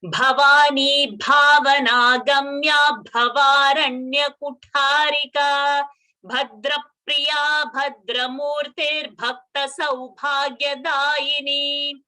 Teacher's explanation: Most of the people make a mistake of not getting the bha mahaprana. So Bhavani you might start, but then it again goes to Bhavana Gamya, Bhavaranya.